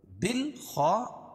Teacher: یہ الف نہیں پڑھی جائے گی، با کو لام میں ملائیں گے اور اس کے بعد حروف قمری کے 14 حرفوں میں سے خا ہے، خا کو موٹا پڑھیں گے کیونکہ حروف مستعلیہ میں سے الف سے پہلے زبر ہے تو الف مدہ، طیعہ گول تا کو وقف کی حالت میں ہائے ساکنہ سے بدل دیں گے۔